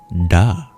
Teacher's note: That single Sanskrit sound is da, which is like a D in English, but in Sanskrit, this sound, you curl your tongue back to pronounce it. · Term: retroflex sounds